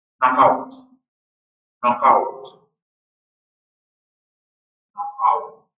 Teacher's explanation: the consonant which initially belongs the syllable of the first word shifts to the syllable of the next word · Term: re-syllabification